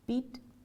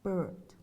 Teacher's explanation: Vertical movement of the tongue, close or high versus mid-open or mid.